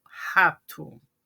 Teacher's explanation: quando uma palavra começa com R, vai ter o som forte, o mesmo som do J do espanhol